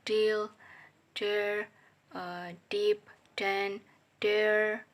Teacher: voice alveolar stop sound da